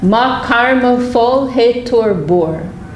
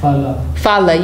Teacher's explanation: I'm pronouncing with the Bengali pronunciation, but I say the A's as O's